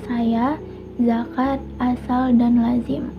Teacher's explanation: konsonan frikatif alveolar. Ini mencakup huruf S dan Z. Contohnya itu pada kata saya, zakat, asal, dan lazim.